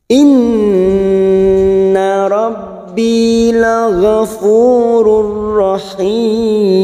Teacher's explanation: Nun yang bertasdid gunna musaddadah kita tekan selama 3 harokat. Inna rabbi masuk pada huruf ba yang bertasdid.